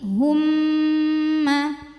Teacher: kemudian karena harakatnya dah kita monyongin hu masuk ke mim karena mimnya ada tasdid maka bunyi M tahan dengungkan jadi tidak sekedar humma tapi humma Nah hati-hati pas ngedengungin bibirnya